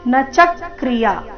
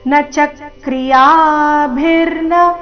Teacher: ನ ಮತ್ತೆ ಚ ಎರಡು ರಸ್ವ ಚ ಮೇಲೆ ಆ ಘಾತ ಬರಬೇಕು